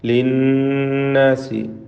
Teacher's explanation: നൂൻ മുഷദ്ദദ, ശ്രദ്ധ നൽകപ്പെട്ട നൂനിനെ മണിക്കുക.